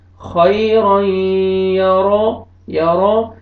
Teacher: यहाँ पे देखें तनवीन के बाद हरूफ यरमलून में से या है, आपने इदगाम करना है गुन्ना के साथ और रा को मरफत है, रा को मोटा करके पढ़ेंगे